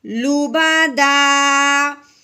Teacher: الف سے پہلے زبر آ گئی, تو الف سے پہلے زبر آ جائے تو اسے ایک الف کے برابر لمبا کرتے ہیں